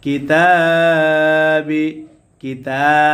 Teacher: তায়ের উপরে খারা জবর আসার কারণে এক আলিফ টান হবে, মাদ্দে তবাই।